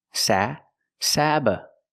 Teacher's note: the first syllable is the short a like black cat SA sabba the second syllable is relaxed uhuh Sab sabotage sabotage